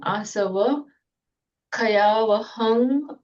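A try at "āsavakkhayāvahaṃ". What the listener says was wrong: Okay, but you made a slight pause there. Asava Kayava. Can you try and do it as one? Asava Kayavaham. In Sanskrit, it would have been Asrava Kshayavaham.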